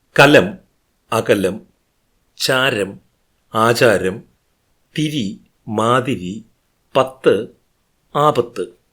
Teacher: സ്വരങ്ങളുടെ മധ്യത്തിലുള്ള ക ച ത പക്കൾ ഗ ജ ദ ബയോട് അടുത്തു നിൽക്കുന്നു